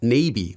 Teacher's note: it goes up and back down at the end